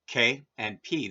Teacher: When we make sounds like K, and P, the flow of sound through our mouth stops completely.